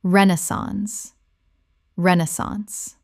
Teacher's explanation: Three syllables with the stress on the first.